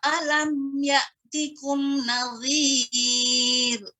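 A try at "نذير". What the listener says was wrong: Kemudian nazir itu tipis, tidak nazir. Khawatirnya seperti huruf dha. Nazir, tapi nazir. Alam ya'tikum nazir. Nazir tipis, tidak nazir. Kalau nazir jadi huruf dha.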